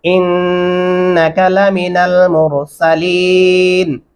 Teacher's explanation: یہاں پہ انکا قاف کو لمبا نہیں کریں گے اور الف اور نون کے درمیانی آواز میں غنہ ضرور کریں گے۔